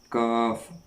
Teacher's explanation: یہ زبان کی جڑ اور تالو کے سخت حصہ سے ادا ہوتا ہے۔ جیسے کاف جو لکھا ہوا ہے وہیں پر آپ کو یہ محسوس ہوگا، آپ محسوس کریں گے کہ اسی جگہ سے یہ ادا ہو رہا ہے۔